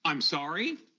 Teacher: there was a rising intonation when he said, I'm sorry